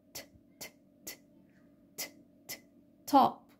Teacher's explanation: أول ألوفون ليه وهو الأسبيريتد برضو، بيكون في بداية الكلمة زي top، في هوا بيخرج كده